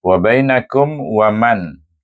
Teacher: Terus saja kum dengan wa tak ada dengung bacaannya